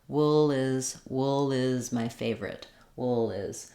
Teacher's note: the tongue height is about the same for that dark L as the uh sound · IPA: ʊl